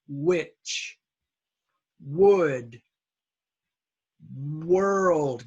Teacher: this H has no sound some of you try to put an H in there · You say which, but you don't need a wh. Just give me only a W and no H sound.